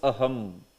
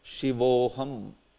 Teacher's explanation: when a Visarga is preceded by a short A, and followed by short A, all together they become O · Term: Visarga is turning into Okar